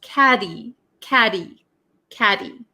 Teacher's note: catty in American English, the TT, sometimes is referred to as a flap T. So it doesn't sound like a hard t sound. Okay, it's like a D almost.